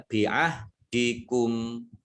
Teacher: Kalau dibaca berhenti, kumnya dibaca pendek ya